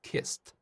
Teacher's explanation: 자, 그럼 더 많은 동사의 과거형 발음 같이 한번 알아보도록 하겠습니다. kiss, 마지막 소리가 s로 끝나니까 무성음이에요. 그래서 뒤에 오는 ed는 같은 무성음인 t 소리가 돼야 되죠. 그래서 kiss 하다가 t만 발음해주면 됩니다.